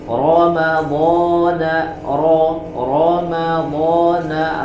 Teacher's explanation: ro berharakat fathah maka dibaca dengan tebal